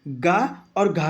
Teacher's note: गा और घा की बात करता हूँ तो ये कंठ से बोले जाते हैं